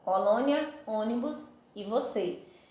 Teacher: acento circunflexo, que indica que a vogal tônica possui o quê? O timbre mais fechado.